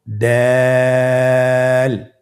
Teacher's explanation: দাল হরফটি বারিক হরফ। এ হরফটি উচ্চারণ করার সময় আমরা অবশ্যই তিন আলিফ টেনে পড়ব।